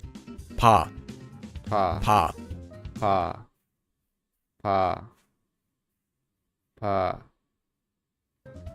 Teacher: This letter is pronounced similar to a P or a B in English, but it's not a hard P sound like in the word park, and it's not a hard B sound like in the word ball. It's between P and B, and is a bit softer.